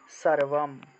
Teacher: অনুস্বার মূলত কোনো একটা শব্দের শেষে যদি থাকে তাহলে ম রূপে উচ্চারণ করা হয়ে থাকে কোনো একটা শব্দের শেষে।